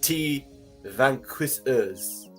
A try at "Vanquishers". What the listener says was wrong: No, the T's silent. The T's silent, like in pterodactyl.